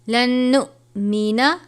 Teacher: حمزہ ساکنہ ہو تو جھٹکا دے کر پڑھتے ہیں